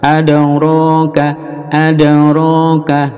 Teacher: qalqalah mantul di dal